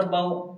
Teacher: با واو زبر باو، اس کو جلدی پڑھنا ہے، اس لیے کہ واو ساکن سے پہلے رولس ہے، واو ساکن سے پہلے زبر ہو تو واولین ہوگا، واولین کو نرم آواز کے ساتھ جلدی پڑھنا ہے